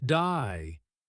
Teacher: They may say words like day more like die, giving words a slight twist.